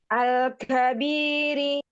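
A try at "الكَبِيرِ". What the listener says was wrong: Lamnya alirkan. Bainiyah. Al-kabiri. Jadi ditahan lam sukunnya ya, jangan buru-buru. Terus tekan suaranya ke bawah lam sukunnya dari tenggorokannya itu ya.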